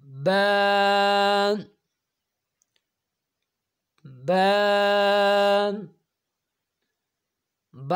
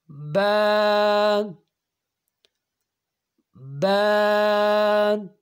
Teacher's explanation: اوپر والے ہونٹ اور نیچے والے ہونٹ آپس میں ملیں گے، تب با ادا ہوگا۔